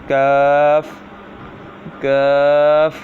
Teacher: کاف زبان کی جڑ اور تالوں کے سخت حصے سے ادا ہوتا ہے